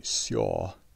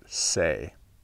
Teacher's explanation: The protoform for each is Seja, but in the East, we've just dropped that A, the infinitive ending, whereas in the West, the infinitive ending together with that long E in the root have come together as a new J long A vowel that only happens in West Norse